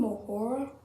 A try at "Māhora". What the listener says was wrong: It's actually Mahora, you need to roll the R.